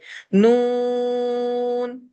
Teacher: نون، نون لام اور را کے گروپ کا ہے، زبان کی گولائی اوپر والے سخت مسوروں پر لگتی ہے اور ہم نون پڑھتے ہیں اور اس کے ساتھ ساتھ ناک سے وزل ساؤنڈ بھی آتا ہے، یعنی گھننے کی آواز بھی اس کے ساتھ ایڈ ہوتی ہے جس کی وجہ سے یوں لگتا ہے جیسے ناک اور منہ کی پوری چھت جو ہے وہ وائبریٹ کر رہی ہے